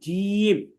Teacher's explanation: জিহ্বার মধ্যখানটা তার উপরের তালুর সাথে লেগে উচ্চারিত হবে জিম। এখন অনেকেই বলে জিম, জিম, যে রাজিম, জিম বলা যাবে না, এটা বলতে হবে জিম।